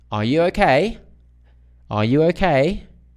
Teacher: yes or no questions they have a rising it's rising